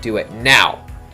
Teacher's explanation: in English we'll sometimes have like a falling tone almost when we're trying to say something like do it now